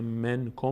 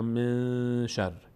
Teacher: اگر بعد از نون ساکن و تنوین نه نون میم بود، نه ب بود که تبدیل به میم بشه، نه حروف یرملون بود که تبدیل به حرف ما بعدش بشه، و نه حروف حلقی بود که همون جوری که هست ادا بشه، قاعده چهارم اجرا میشه که اخفاست. یعنی ما نون رو مخفی میکنیم در بینی، از بینی ادا میکنیم. مثلا من کم میگیم من کم یا من شر.